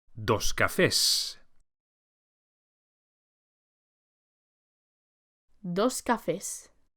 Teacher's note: As you can see, just as in English, an S is added to make the noun plural. But please take care to pronounce the plural S as a S and not Z, as with many plurals in English.